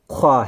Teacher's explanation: خوا کا مخارج ہے حلق کا اوپری حصہ، حلق کا اوپری حصہ۔